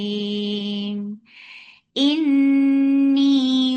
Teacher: This kunna is akmal, so keep the sound in your nose for a longer time. Ni, two counts long.